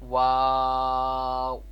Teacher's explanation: واؤ دونوں ہونٹوں کی گولائی سے ادا ہوتا ہے، یعنی دونوں ہونٹوں کو ہم جب گول کریں گے تو تب یہ واؤ ادا ہوگا